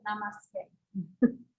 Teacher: And it's a regular S. It's not an SH sound.